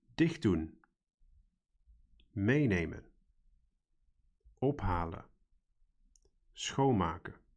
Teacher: the stress or emphasis in pronunciation was on the first syllable